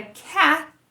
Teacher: Já a palavra cat é o som t, que eu falei que não existe no português, né? É parecido, mas tem um soprinho.